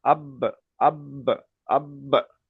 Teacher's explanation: বা হরুফে কলকলা পাঁচটি অক্ষরের মধ্যে একটি তাই বাকে মাখরাজের সঙ্গে ধাক্কা লেগে একটু আলাদা হয়ে যাবে